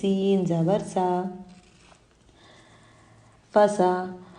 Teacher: سین، زبان کے نوک کو نیچے کے 2 دانتوں کے جڑ میں لگانے سے سین ادا ہوتا ہے۔ جب سین کو ادا کریں گے تو سیٹی کی آواز آئے گی اور اس کو باریک پڑھیں گے۔ سین زبر، سین پر زبر ہے، نہیں کھینچیں گے۔